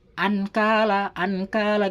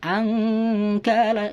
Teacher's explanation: Harus dibaca dengung serta samar. Angkala, suara nun matinya ini dibaca dengung serta samar